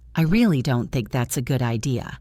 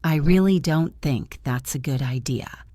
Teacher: Notice the stress on really and good.